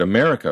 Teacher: the first and last vowels in the word America for instance are both uh rather than a